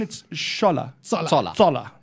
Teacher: Apparently it's pronounced Zola, as in a sharp Z in the front.